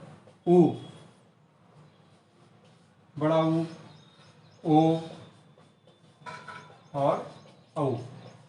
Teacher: ऐसे स्वर जिसका उच्चारण करते समय जीभ का पीछे वाला भाग काम करता है, सबसे पीछे वाला भाग, यानी अंदर से आवाज आती है, तो वो पश्च स्वर होते हैं।